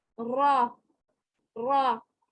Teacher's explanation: ये जहाँ पे रा के ऊपर जबर होती है तो रा मोटा पढ़ा जाएगा।